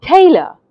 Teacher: you hear the ta part of the word louder than the uh part of the word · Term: stress